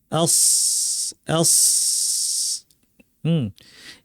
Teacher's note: সদের মাখরাজ দেখতে পাচ্ছেন, নিচে পাড়ে দাঁতের গোড়া, জিব্বা লাগিয়ে, আবার পুরা জিব্বাটাই উঠে যাবে, আওয়াজটা এখানে চাপা পড়ে অনেক ভারী আওয়াজ হবে। আস আস। এই আওয়াজটা ভারী না করলে, আওয়াজটা উপর দিকে না ঠেলি, তাহলে সিন হয়ে যাবে।